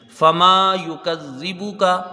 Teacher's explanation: فما یکذبک میں صرف میم کو ایک الف کی مقدار کھینچا جائے گا، باقی سب حروف جلدی پڑھے جائیں گے۔